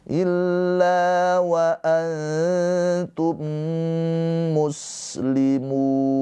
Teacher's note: Maka cara bacanya mim yang ini dileburkan ke huruf mim yang hidup. Tadi mimnya mati, ini mimnya hidup. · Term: idgham mimi